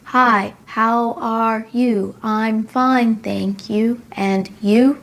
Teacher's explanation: they don't have any rising and falling intonation in their speech their voice just sounds very flat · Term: flat voice